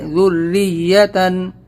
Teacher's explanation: یہاں پر بھی ذریتن یا پر تشدید ہے تو ہم یہاں پہ یا کو سختی سے ادا کریں گے